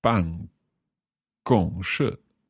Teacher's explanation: fourth, first, fourth.